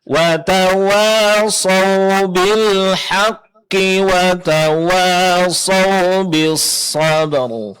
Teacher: jangan lupa huruf H di sini tipiskan, jangan terpengaruh oleh tebalnya huruf qaf